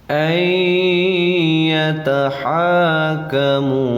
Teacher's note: Nun mati bertemu iya dinamakan idgham. Nama idghamnya adalah idgham bi gunnah, bacanya pakai dengung. Cara bacanya itu tahan, tekan, lalu dengungkan ya.